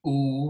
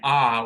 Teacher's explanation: oo, which is high and back, and ah, which is back and low